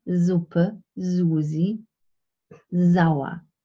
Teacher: in German, standardized German, the letter S at the beginning of a word always represents a voiced sound.